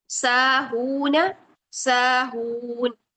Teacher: दोनों को 2 2 हरकत लंबा करके पढ़ना है, नून को लंबा नहीं करना है। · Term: वाओ मद्दा